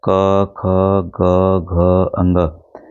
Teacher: देखिए आपको लगेगा कहीं पे भी ना जीभ छोरी है ना दांत छो रहा है ना ओठ छो रहा है। वह हमारे कंठ से निकल रहा है। ठीक है? कंठ मतलब गले से निकल रहा है।